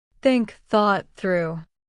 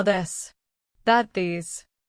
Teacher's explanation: Put your tongue between your teeth and push air out for think. For this, your tongue touches the same position, but with your voice turned on.